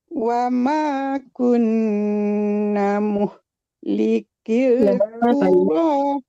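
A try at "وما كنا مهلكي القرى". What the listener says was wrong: Wa ma kunna panjang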